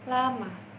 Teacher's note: konsonan l yang merupakan konsonan lateral alveolar